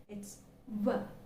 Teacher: when you utter the sound W, the back part of the tongue is getting raised to the soft palate.